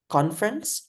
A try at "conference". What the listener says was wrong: No, it's not. It's not V.